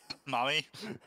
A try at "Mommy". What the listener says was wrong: I know it's the accent, but that sounds like ma'am.